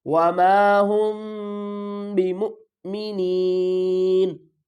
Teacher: یہاں پر بھی ہم میم کی آواز کو چھپا رہے ہیں، آگے با ہے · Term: اخفاء شفوی